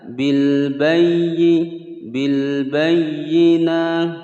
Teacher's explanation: Bil bayyi ada ya bertasydid ditekan, tidak boleh digunnahkan.